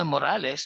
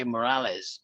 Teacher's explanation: Yung S sound mo magiging parang Z.